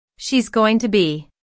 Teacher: notice how this is pronounced like gonna be instead of four syllables go ing 2 B there are three syllables gonna be at